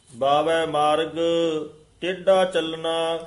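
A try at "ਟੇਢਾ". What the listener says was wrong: हाय टेढ़ा डड्डे नाल नहीं बोलना टेढ़ा नहीं कहना टेढ़ा ढड्डा ला के उच्चारण करना बावे मार्ग टेढ़ा चलना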